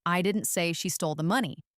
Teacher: by putting emphasis on she, I'm suggesting that perhaps someone else stole it, not her